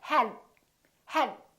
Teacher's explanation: hold your tongue behind your upper teeth for the D and keep it there. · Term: stop